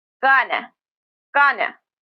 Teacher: gonna is generally pronounced with the schwa.